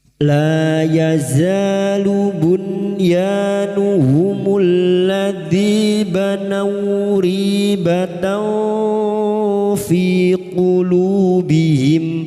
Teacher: la lam alif dua harakat kita panjangkan mad thabi'i la yaza fathah bertemu alif dua harakat kita panjangkan mad thabi'i.